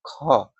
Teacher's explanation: और इसके अंदर अगर महाप्राण का हमको छांटना हो तो क में ज्यादा हवा नहीं निकलता है, लेकिन ख में क्या है, ज्यादा हवा निकलता है, तो इस कारण ये महाप्राण हो गया।